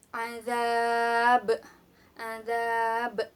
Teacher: Karena di sini ada huruf ba yang berada di akhir ayat. Jadi harus dibaca mantul, mantulnya agak besar. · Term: qalqalah kubro